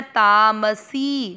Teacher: सी की मात्रा बड़ी लंबा खींचना